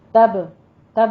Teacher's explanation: تب میں قلقلہ کرنا ہے، با کے اوپر، با ساکن ہے